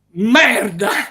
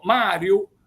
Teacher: forse per l'enfasi con cui si dice questa parola, si pronuncia con la M doppia